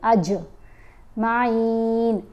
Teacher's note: جیم کی آواز کو ہلا کر پڑھیں گے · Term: کلکلا